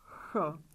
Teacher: So we can put the finger on our throat again, ch. Because the vocal cords don't vibrate, ch is a voiceless sound.